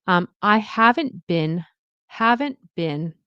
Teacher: So I don't pronounce the T.